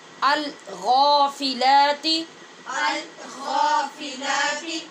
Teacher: غین کو پر بھی کرنا ہے اور کھڑی زبر کی وجہ سے آواز لمبی بھی ہوگی